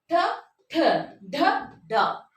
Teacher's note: ನಾಲಿಗೆಯನ್ನ ಬಾಯಿಯ ಮೇಲಿನ ಭಾಗಕ್ಕೆ ತಾಗಿಸಿ ಹೇಳುವಂತಹ ಅಕ್ಷರಗಳಿಗೆ ನಾವು ಮೂರ್ಧನ್ಯ ಅಕ್ಷರಗಳು ಅಂತ ಹೇಳ್ತಿವಿ